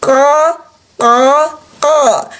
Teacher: Berarti ada suara tebal di dalam dari pangkal lidah yang terangkat